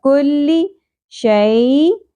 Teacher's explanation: یا ساکن حرف لین ہے یہاں پر نرمی سے ادا کرنا ہے. اخفا مع الغنہ ہوگا کیونکہ شین حروف اخفا میں سے آ گیا تنوین کے بعد.